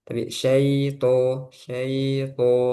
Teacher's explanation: Kemudian syai itu jangan masuk hidung.